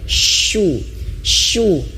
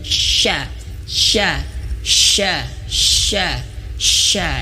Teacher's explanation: Nah, di sini agak lebih ekstrim ya bagi pemula, bagi ibu bapak dilatih huruf H-nya mengeluarkan angin yang banyak, hu, dan kemudian huruf shin. Huruf shin itu asal makhrajnya yaitu di tengah lidah, shu, shu, sama seperti c, ca, sha, ca, tapi dianginin lebih banyak, sha, sha, sha, sha, sha.